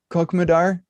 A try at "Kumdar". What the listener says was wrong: The KHO is silent. It's just Kumdar.